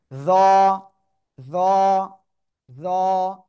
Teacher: জিহ্বার আগা উপরে দুই দাঁতের আগায় লাগান, লাগান লাগান লাগান সবাই, লাগিয়ে মোটা আওয়াজে উচ্চারণ করতে হবে।